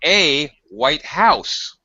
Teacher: The intonation, the pitch goes up.